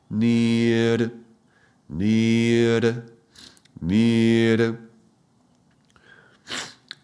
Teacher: the r is the tip of the tongue touching the upper palate before the teeth in the hard surface of the upper palate